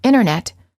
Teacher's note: the T after an N or an n Sound is often silent instead of saying internet you will frequently hear Americans say internet